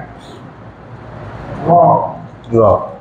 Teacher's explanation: জিহ্বার আগা উল্টা পিঠ তারপর উপরে তালুর সাথে লাগাইয়া র